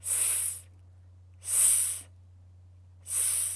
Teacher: your throat should not vibrate because the letter S sound is unvoiced.